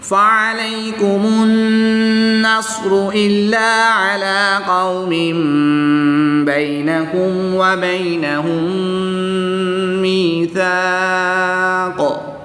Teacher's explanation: یا ساکن سے پہلے میم مشدد کے نیچے زیر ہے تو یہاں پر یا مدہ ہوگا، ایک الف یعنی 2 حرکات کے برابر کھینچ کر پڑھیں گے۔ میم مشدد اور نون مشدد میں ہمیشہ غنہ ہوتا ہے، تو ان دونوں میں ہم غنہ کر کے پڑھیں گے